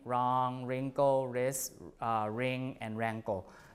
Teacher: the W before R is lost · So in all of these words, you don't pronounce the W